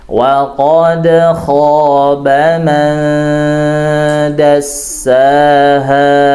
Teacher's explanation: Kemudian kha itu juga ditebalkan, huruf kha berbaris fathah ditebalkan bacanya